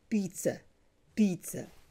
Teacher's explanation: the stress is on the first syllable. Number two, the sound between P and T is a long vowel.